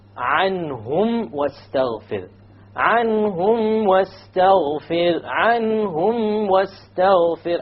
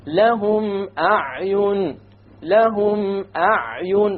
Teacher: All of the remaining letters, there is no special rule. No idgham, no shadda, no ikhfa, no ghunna. You just pronounce the mim and move on. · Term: idhar